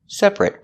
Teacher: When it's not a verb, we pronounce it separate. Separate with the e- sound. Because when you say separate, the stress is on the first syllable only.